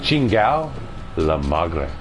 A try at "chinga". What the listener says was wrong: No, chingao is like fuck. You're not gonna say it's chingao. You put the A at the end.